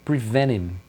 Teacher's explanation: Do N vai direto pro him, prevent him.